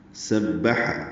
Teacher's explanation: سین حروف صفیریہ میں سے ہے، سیٹی کی آواز سے ادا ہوگا، با سے ملائیں گے۔